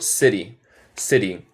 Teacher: digo el T en el medio de las palabras, usualmente más como R española